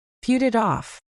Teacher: the T sounds at the end of put, and it actually change into soft D sounds because they are sandwiched between vowels. So instead of saying put it off like a robot, you blend it all together.